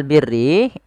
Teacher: huruf ra yang dibaca dengan tipis, yaitu ra tarqiq